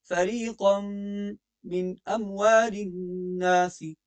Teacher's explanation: فریقا پہ غنہ ہے، تنوین کے بعد میم ہے